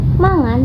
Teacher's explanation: mangan menunjukkan perubahan bunyi K menjadi eng yang membuat lafalnya terdengar lebih lembut dan mengalir